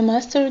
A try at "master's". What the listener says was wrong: You want to say master's. Again, you have an S at the end there. It should be pronounced as a Z because it comes after a voiced consonant, master's.